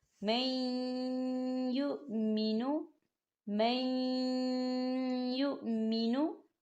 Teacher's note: آپ یا کی مثال کو دیکھیں، نون ساکن کے بعد یا آ رہا ہے اور یا کے اوپر تشدید ہے۔ ہم میم کو یا کے ساتھ ملائیں گے اور نون ساکن کو ہم یا کے اندر مدغم کریں گے